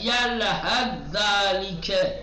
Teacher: سا اور زال ایک جگہ آئے ہیں، پہلا ساکن ہے تو ادغام کیا جائے گا